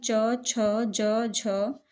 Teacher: तालव्य मतलब जिसमें जिह्वा तालु को छूती है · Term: तालव्य व्यंजन